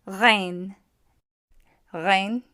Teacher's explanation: Rein is going to be produced in the throat. What will help is to restrict the airflow.